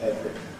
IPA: ˈevri